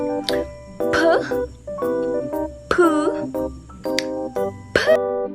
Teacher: P ay isang pasara at may punto ng artikulasyon panlabi